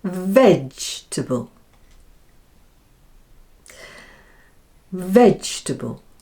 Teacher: And the second and third syllables are combined, and instead of saying table, we say table, because the vowel is unstressed and so takes on the sound which is that common little schwa sound